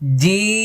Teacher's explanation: জি শেষে দেখেন ঠোঁট বন্ধ হবে, কারণ এটা শেষে মিম আছে। জি, এই যে দাঁত লাগবে না, জি লক্ষ্য করুন, জিম।